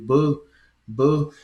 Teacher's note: Veja que ela é oclusiva explosiva, né? Bilabial, oclusiva explosiva.